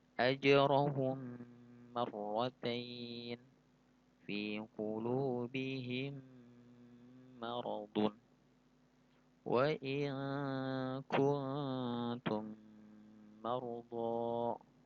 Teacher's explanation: Cara membaca idgham mislain adalah dengan cara menyuarakan suara mim rangkap atau double ya, atau ditasydidkan dengan samar-samar dengan panjang dua harokat.